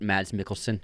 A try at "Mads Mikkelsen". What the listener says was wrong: I read somewhere, or someone left a comment where you just say Mad, not Mads. Like Mad Mikkelsen. I think it's pronounced Mad.